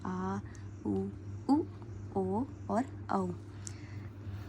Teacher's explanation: उच्चारण जो है जीभ के पश्च भाग से किया जाता है जैसे हो गया आ उ ओ और औ स्वरों के उच्चारण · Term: पश्च स्वर